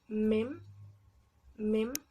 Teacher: es un fonema bilabial y es un poco parecido a la B, pero en este caso no vamos a dejar salir el aire por la boca, sino que vamos a cerrar completamente nuestra boca y vamos a dejar salir un poco de aire, pero por la nariz.